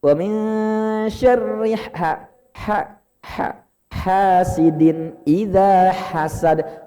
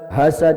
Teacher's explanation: Hak kecil itu ada kayak kita ngos-ngosan atau kayak habis makan pedes ya.